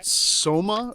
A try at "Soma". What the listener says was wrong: Okay, because it sounded like summer.